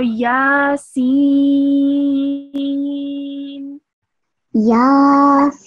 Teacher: Try and hold this scene sound for around 4 seconds because this is the extra long stretch, Madda